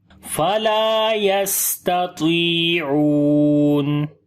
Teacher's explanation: Taw we read in heavy sound just due to isti'la quality, and also we long due to ya madda, and ain we long due to waw madda here.